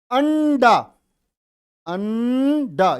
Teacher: ये न की आवाज किससे पहले आ रही है? डे से तुरंत पहले। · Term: अनुस्वार